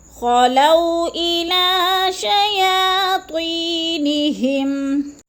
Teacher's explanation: خلو کو لمبا نہیں کرنا ہے کیونکہ وہ لین ہے، ادھر جلدی جلدی ادا کرنا ہے